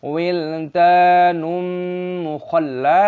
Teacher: Perpanjang dal, tanwin bertemu dengan mim, dibaca sebagai idgham bighunah, menyatu dengan hum